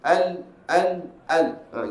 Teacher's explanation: lam keluar daripada hujung lidah diangkat menekan pada makhraj gusi keras sebelah atas · hujung tepi hujung lidah ni diangkat menekan kepada langit-langit keras sebelah hadapan dia langit-langit dia melengkung gini kalau kita tengok langit-langit kita dalam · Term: huruf lam